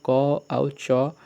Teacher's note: ଏହା ବର୍ଣ୍ଣଗୁଡ଼ିକ ଏକାଧାରାରେ ଅଘୋଷ ଏବଂ ସ୍ୱରତନ୍ତ୍ରୀର ଅକମ୍ପିତ ଏବଂ ଅଳ୍ପପ୍ରାଣ ଉଚ୍ଚାରଣରେ କମ୍ ଶ୍ୱାସବାୟୁ ନିର୍ଗତ ହୋଇଥାଏ